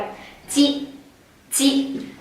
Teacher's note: ตัวนี้ใช้ลิ้นส่วนหน้าปลายลิ้นนะคะกับปุ่มเหงือกนะเอาปลายลิ้นแตะปุ่มเหงือก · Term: เสียงจิ